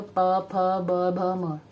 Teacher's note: दंत में जीभ आपकी दंत पे जाती है, त, थ, द, ध, न। ओष्ठ में जो आपके लिप्स हैं उनकी मदद से आप ये बोल पाते हो